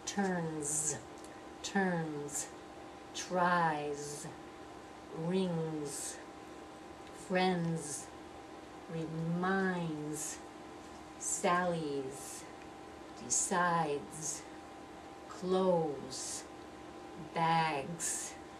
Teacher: And all of these words end with a voiced sound.